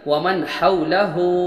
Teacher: الٹا پیش واو مدہ کے برابر ہوتا ہے، اور حرکات مدہ میں سے ہوتا ہے، اس کو ایک الف کے برابر کھینچ کر پڑھیں گے۔